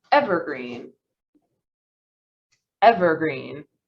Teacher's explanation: oh yeah the first syllable is stressed so we have e green as opposed to evergreen uh yeah